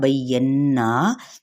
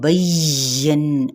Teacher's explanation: با کی زبر کو یا کے ساتھ، اور یا کو فوری ادا کریں گے ہلکا سا ، یہ نہیں سختی نہیں، بین اس طرح سے نہیں، بینا،